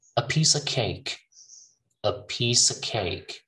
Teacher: I'm not even saying of, I'm just saying a piece of cake